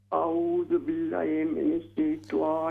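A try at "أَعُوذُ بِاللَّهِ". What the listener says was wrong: اعوذ باللہ. لمبا کیجیے زبر کو.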